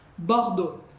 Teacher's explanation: E o x você já sabe que a gente não fala.